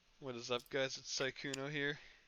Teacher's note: He has kind of a breathier voice. Breathy. He sounds almost nervous when he talks.